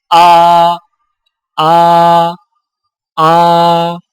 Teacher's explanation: حمزہ حلق سے بغیر رگڑ کھائے ادائیگی کے وقت زبان کی جڑ کو حلق کی طرف دبائے بغیر ادا کریں